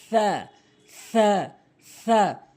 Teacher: জিহ্বার আগার সামনে দুটি দাঁতের আগাতে লাগাবেন